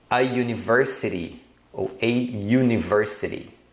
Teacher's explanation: a letra U ela é pronunciada com o som de u e o som do u é uma semivogal é como se fosse o y u you Então nesse caso você vai usar a então por isso que